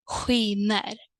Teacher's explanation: And then the combination SK changes into sound ch